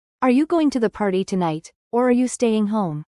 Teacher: Notice the rising intonation at the end of each option.